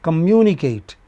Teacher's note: Communicate, 1, 2, 3, 4, polysyllabic word, the stress comes on the anti-penultimate.